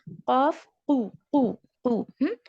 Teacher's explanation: جو soft pellet ہے وہاں سے ہمارا قاف نکلتا ہے، ہیوی ہیوی والا قاف